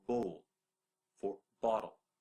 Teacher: a glottal stop like cockney